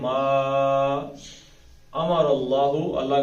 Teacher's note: ما امر اللہ کا لام موٹا پیچھے زبر ہے